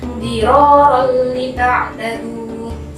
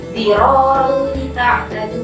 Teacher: Ini hampir sama dengan idgham bi gunnah, cuman bedanya di sini tidak terlalu berdengung. Idgham bila gunnah, hurufnya lam dan ro saja.